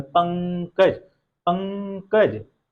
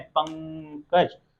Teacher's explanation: मैं बताया था ऊपर वाले हमेशा आधे होते हैं, तो यहाँ पे जो अनुस्वार है वो भी क्या आधे अनुस्वार का प्रयोग हुआ है, तो आधे अनुस्वार के पहले वाले वर्ण पे हम जोर दे रहे हैं